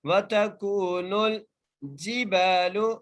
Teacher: نون کو لام سے ملا کر پڑھیں گے